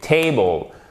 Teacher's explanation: Ici, on a une diphtongue et quand vous avez l'apostrophe ici, ça signifie que la première syllabe, c'est celle qui a l'accent tonique, c'est celle qui est accentuée. Table.